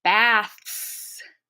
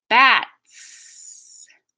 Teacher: the main difference between voiceless th and t t is a complete closure it stops the airflow entirely of your mouth and then the S comes out